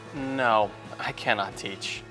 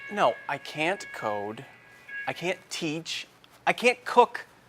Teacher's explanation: No, I cannot teach. However, in fast speech, many Americans reduce cannot to can't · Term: short form of cannot